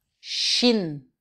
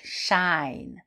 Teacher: Shin, c'est bref et c'est plus fermé.